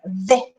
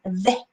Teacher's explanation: La lengua entre ambos dientes superiores e inferiores